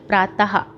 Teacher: ह की ध्वनि निकलती है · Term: विसर्ग